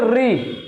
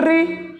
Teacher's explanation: री को बोलते समय हमारी जीभ मुड़ जाती है। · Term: मूर्धन्य